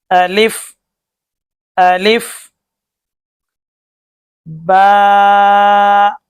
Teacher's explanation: अलिफ मुंह के खाली हिस्सा की हवा से अदा होता है